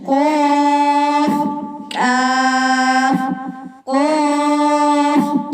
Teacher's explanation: موٹا قاف بھی چیک کر لیں، نرم تالو سے نکلتا ہے